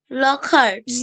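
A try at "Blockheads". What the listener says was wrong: না, ব্লক। লক না, বিটা উচ্চারণ করতে ব্লক। ব্লক হেডস, HEADS হচ্ছে হেডস। ব্লক হেডস।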